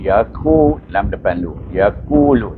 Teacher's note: qaf depan ku, bertemu dengan waw, baca dengan mat asli.